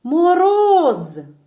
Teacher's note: Мороз наголошений роз і ще раз Мороз так наголошений склад роз наголошений буде другий голосний О